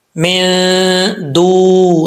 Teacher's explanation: نون ساکن کے بعد حروف اخفا میں سے دال آ رہا ہے تو یہاں 1 الف کی مقدار غنہ کیا جائے گا · دال کے بعد واو مدہ ہے، 1 الف کی مقدار اس کو لمبا کریں گے